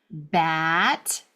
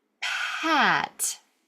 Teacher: I'm popping my air for the unvoiced one, but I'm not starting my voice until I get to a bat.